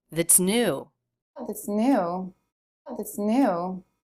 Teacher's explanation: That is unstressed. The big clue is it's reduced. We don't hear the a vowel, we have a schwa. That's. And the pitch is flat, the word is said quickly.